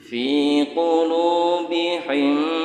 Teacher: Kasrah bertemu dengan ya sukun, atau depannya ada ya sukun. Baca panjang, tapi panjangnya biasa saja, enggak usah over terlalu panjang. Fi qulubihim, fi qulu sama mad tabi'i.